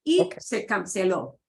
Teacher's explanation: you want to make sure you punch the O at the end